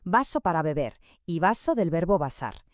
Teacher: En el español estándar, ya sea de España o de América Latina, no existe ninguna diferencia fonética entre el sonido de la B y el de la V. Es un único sonido bilavial.